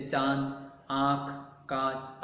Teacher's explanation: इसका उच्चारण अनुस्वार की अपेक्षा हल्का होता है। इसका उच्चारण करते समय हवा नाक और मुंह दोनों से निकलती है, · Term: अनुनासिक